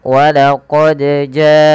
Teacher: Ja ini panjang disebabkan karena adanya Hamzah yang datang setelah hurufnya dan dia terdapat pada satu kata maka kita membacanya panjangkan empat harakat